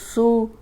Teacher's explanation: اب صاد موٹا بھی ہے لیکن سیٹی والا ہے